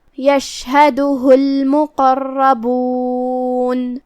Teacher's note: کلمت المقربون میں یہاں بھی حرف القاف کو ہم زبان کے جڑ اور تالو کے نرم حصے سے ادا کریں گے اور اسے بھاری آواز میں بھی. را پہ تشدید ہے تو 2 حرف کے برابر ہمیں را کو پڑھنا ہے اور ہمیں را کو بھاری آواز میں بھی پڑھنا ہے کیونکہ اس پہ زبر ہے.